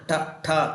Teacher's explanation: ಮೂರ್ಧನ್ಯಾಕ್ಷರಗಳು ನಾಲಿಗೆ ಹಿಂಬದಿ ಮಡಚಿಕೊಂಡು ಉಚ್ಚಾರಣೆ ಆಗ್ತವೆ.